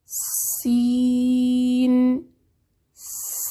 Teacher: زبان کی نوک جب نیچے والے 2 دانتوں کے اندرونی حصے پر رکھیں تو اس کی ادائیگی صحیح ہوتی ہے۔ سین سین سیٹی والا حرف ہے، سانس جاری رہتا ہے، نرم ہے